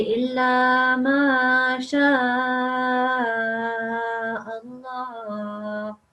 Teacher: that will turn the lam into a lamul jalala, and you pronounce it in a thick way. So you say illa ma sha Allah.